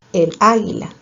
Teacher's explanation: la A inicial de águila es tónica